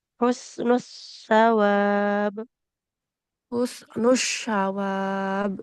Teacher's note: Kalau huruf sa, dia ujung lidah ke ujung gigi seri atas.